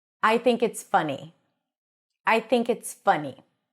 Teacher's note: I want you to say it as a statement while dropping the pitch at the end